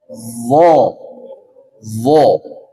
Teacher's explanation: ujung lidah bertemu dengan ujung gigi seri atas tempel